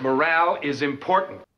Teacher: in American English, you would say morale with an A sound and a very rounded R